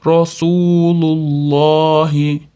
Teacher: Olloh lafzi zammadan keyin kelganligi uchun o'rtasidagi tashdidli lamni oga o'qiymiz, ya'ni tafhim qilib